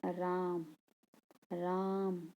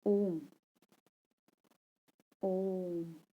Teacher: जिनके उच्चारण में दीर्घ स्वर से भी अधिक समय लगता है उन्हें हम क्या बोलते हैं, प्लुत स्वर बोलते हैं।